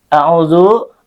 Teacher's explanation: A'udzu, au-nya di sini adalah mad tabi'i karena ada wawu sukun sebelumnya dhammah dan ia dibaca dengan panjang 2 harakat